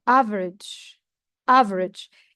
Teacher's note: You feel that there is no E in the word because we cut it fast. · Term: unpronounced vowels